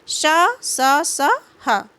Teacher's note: ऊष्म व्यंजनों का उच्चारण एक प्रकार की रगड़ या घर्षण से उत्पन्न ऊष्म वायु से होता है